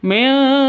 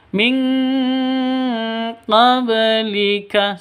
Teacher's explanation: Nun mati atau tanwin bertemu dengan qaf atau kaf baru ditambah dengan ng. Jadi bacanya ming seperti itu, bukan dibaca milqa, itu salah.